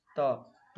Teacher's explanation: त वर्ण का उच्चारण स्थान दंत से होगा